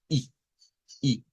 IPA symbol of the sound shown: ɪ